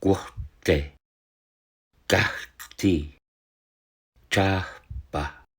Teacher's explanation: a puff of air precedes voiceless consonants rather than follows them as they do in many Germanic languages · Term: preaspiration